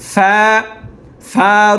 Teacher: উপরের দাঁতগুলো নিচের ঠোঁটের পেটে